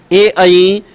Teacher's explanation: ए आई इन दोनों वर्णों का उच्चारण स्थान कंठ तालु होता है, कंठ तालु होता है, और कंठ तालु से बोले जाते हैं तो इसलिए इन्हें कंठ तालव्य के नाम से जाना जाता है, कंठ तालु होता है।